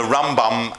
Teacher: the Rambam you put the emphasis on the first syllable